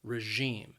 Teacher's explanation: the word has two syllables and the stress is on that second syllable